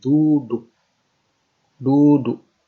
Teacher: Ketika kita menyebut kata duduk, itu kan mati, bunyi itu mati di dalam kerongkongan. Duduk. Duduk dalam kerongkongan. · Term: glottal stop